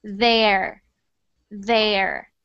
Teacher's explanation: the reason that you have to stick your tongue out is because if you don't then it sounds like a duh like this dare dare I need it to sound like there